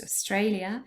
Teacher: Australia has three syllables and the middle one is stressed